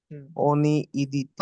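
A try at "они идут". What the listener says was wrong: আনি, ওনি না আনি, উচ্চারণ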